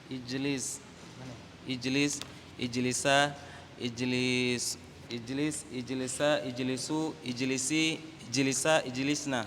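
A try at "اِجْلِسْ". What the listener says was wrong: Ahsan.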